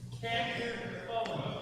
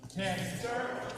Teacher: really stress the first syllable